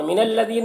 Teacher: ذال کو باریک پڑھیں گے، یا مدہ ہے، سے ایک الف کے برابر کھینچیں گے